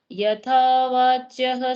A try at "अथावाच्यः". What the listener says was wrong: यथा नहीं, अथा है, अथा।